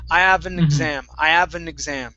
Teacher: We talked about dropping our H's. We can do that with the word have.